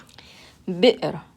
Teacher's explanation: When it has a sukoon on it, it makes a sound, like you're stopping right in your chest. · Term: glottal stop